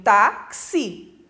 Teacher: O tá é a segunda sílaba de trás para frente, é a penúltima sílaba e ela é tônica. Como ela termina em i, ela leva o acento.